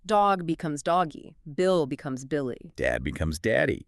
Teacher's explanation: You are instinctively shifting the vowel to that high front position to signal small and cute. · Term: an E sound